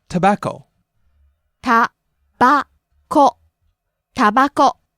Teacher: Rise in the middle and stay high.